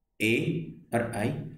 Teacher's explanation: कंठ तालव्य, जो कंठ और तालु दोनों की सहायता से बोले जा रहे हैं